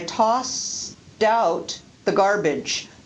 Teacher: the d on tossed gets connected to the next word out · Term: re-syllabification